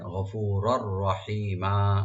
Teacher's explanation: রারে দুই জবর আছে, তানবিন, তানবিন পর রা আসছে আর ইয়ার মালুম থেকে, তো এখানে ইদগাম হবে উইদাউট গুন্না, মানে গুন্না ছাড়া ইদগাম হবে।